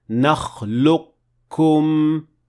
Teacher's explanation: اس لفظ میں قاف پر کوئی علامت نہیں ہے، تاہم چونکہ یہ حروف مدہ میں سے نہیں ہے، اس کا مطلب ہے کہ یہ اپنے بعد آنے والے حرف میں ضم یا پوشیدہ ہو گیا ہے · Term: ادغام